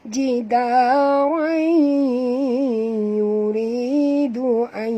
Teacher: Kita kena masukkan sepenuhnya bunyi tanwin ni ke dalam huruf ya, disertai dengung 2 harakat. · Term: idgham ma'al ghunnah